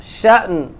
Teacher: یہ یہاں دیکھیں حمزہ ساکن ہے تو اس میں جھٹکا ہوگا